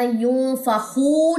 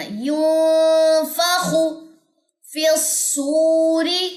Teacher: خواہ کی پیش کو لمبا نہیں کرنا, ینفخو نہیں پڑھنا, ینفخ فی الصور.